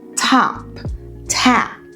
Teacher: Eu começo com esse T. Você vê que tem aspiração T. top tap. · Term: T verdadeiro